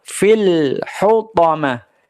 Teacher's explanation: lam sukunnya jangan sampai ada pantulan, jangan sampai ada qalqalah. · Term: izhar